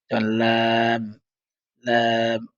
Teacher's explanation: জিহবার আগাটা সামনের উপরের একপাশের দাঁতের গোড়ার সঙ্গে লাগিয়ে পড়তে হয়